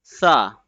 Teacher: The tip of the tongue will be touching at the edge of the upper front two teeth very gently and softly in the letter sa.